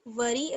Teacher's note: را کو باریک پڑھیں گے زیر کی وجہ سے